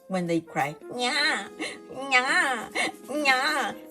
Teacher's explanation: But when we pronounce N, some of the air, or some of the pronunciation forces the air a little bit more through the nose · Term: nasal